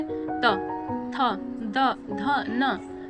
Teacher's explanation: दंत व्यंजन देखेंगे, जिन व्यंजनों के उच्चारण में जिह्वा का नोक ऊपरी दांतों को स्पर्श करती हो, दंत व्यंजन कहलाते हैं।